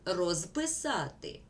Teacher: The перед с вимовляємо як с а ось префікси роз без якщо ми слова вимовляємо повільно то ми чуємо на кінці префіксів звук з розписати А якщо швидко то ми чуємо до кінця префікса с